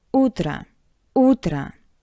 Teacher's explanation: and I want to remind you that in these two words o sounds like a because it's unstressed